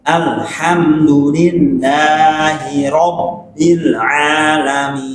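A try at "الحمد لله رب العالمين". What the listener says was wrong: Robbilnya kurang nyengir. Robbil. Bil.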